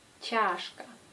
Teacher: la lettre che a une influence sur la lettre A qui devient plus proche de ya.